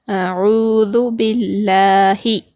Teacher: لفظ اللہ کے لام سے پہلے زیر ہے تو ہم یہاں پر کیا کریں گے، لفظ اللہ کے لام کو باریک پڑھیں گے